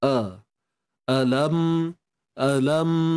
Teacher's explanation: untuk huruf hamzah pastikan bunyinya di pangkal kerongkong